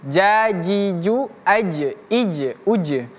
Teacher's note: Karena huruf jim di sini merupakan huruf mati ataupun huruf sukun ya, maka huruf jim itu dia memiliki sifat qalqalah yang artinya memantul.